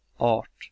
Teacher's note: Sometimes, as in Art, R is more similar to English and you don't articulate it that well.